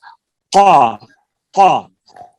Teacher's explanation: تو جو تالو کا نرم حصہ ہے وہاں سے زبان کی جڑ لگے گی، جیسے یہ قا قا، تو وہ قاف وہاں سے نکلتا ہے.